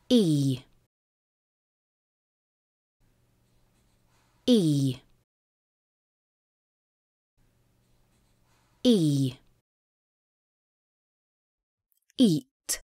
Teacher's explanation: что кончике языка находится впереди у нижних зубов и долгий звук кончик языка находится у нижних зубов тела языка поднята высоко тела и корень языка напряжены губы широко улыбаются долгий звук